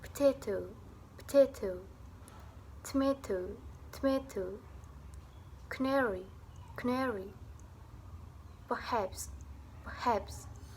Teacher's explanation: vokal pada suku kata pertama akan menghilang. Di sini, plosif awal menempati seluruh bagian tengah suku kata.